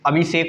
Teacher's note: सा दंत सकार सा का परिवर्तन मूर्धन्य सकार सा में हो जाएगा